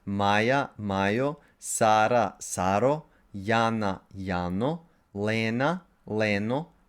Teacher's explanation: two-syllable proper names that have a long rising accent on the first syllable in the nominative singular have suffix o.